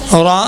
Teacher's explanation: نارن اخفا ہے لیکن موٹا پڑھیں آپ